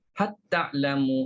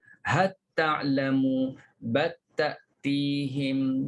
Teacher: Hisyam memasukkan lam pada kalimah hal pada kalimah bal ke dalam ta. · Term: Idgham lam